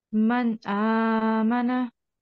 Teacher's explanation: you made a clear manifestation of the Noon